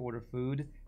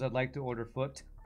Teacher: Poles also devoice the final consonants of words